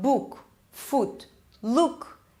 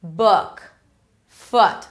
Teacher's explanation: Lips are not really rounded. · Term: relaxed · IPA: ʊ